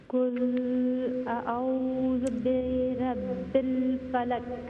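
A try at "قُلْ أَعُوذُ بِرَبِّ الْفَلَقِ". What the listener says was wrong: आप ये देखिए, आप बहुत फास्ट पढ़ती है। फलक, ये फलक ने फलक। लेकिन फा को लंबा भी ना करे। फलक, फलक। नहीं, फालक नहीं है, फलक।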